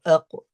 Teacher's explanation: So to find the makhraj of qaf, aq. So qaf from the aqsa al-lisan, which means the back of the tongue, the very back of the tongue. And you raise it up slightly to touch the upper soft palate.